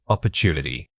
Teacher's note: The rhythm changes completely depending on which syllable you emphasize. In opportunity, the focus is early, giving it a very strong start beat.